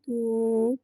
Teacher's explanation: واو مدہ کو ایک الف یعنی 2 حرکات کے برابر کھینچ کے پڑھیں گے